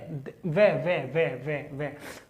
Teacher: मेरे जो दांत हैं, मेरे जो दांत हैं वो होठ से टकरा रहे हैं, वे तो ये हो गया मेरा दंतोष्ठ है, दंत्योष्ठ है।